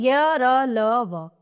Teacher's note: जिन व्यंजनों के उच्चारण में जीभ मुख के किसी भी भाग को पूरी तरह से स्पर्श नहीं करती, वे अंतस्थ व्यंजन कहलाते हैं। इनके उच्चारण में जो है वायु मुख से मुंह में बहुत कम समय के लिए रुकती है और इनकी संख्या 4 है।